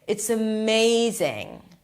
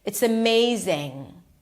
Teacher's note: And the way she emphasizes it is by emphasizing not only the vowel in it but also all the consonants. It's um her M is so long. It's amazing. Also the NG.